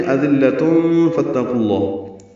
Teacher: وَأَنْتُمْ أَذِلَّةٌ ملانے کی صورت میں أَذِلَّةٌ فَاتَّقُوا اللَّهُ، تنوین کے بعد فا آنے کی وجہ سے اخفا ہوگا